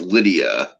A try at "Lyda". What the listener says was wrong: It's just it reads like Lydia, and I know it's like what it says on there, but it's pronounced Lyda. I don't know why I just go with Lydia, but it's Lyda apparently.